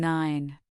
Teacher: For nine, your tongue is against your teeth ridge and the nasal sound is directed there.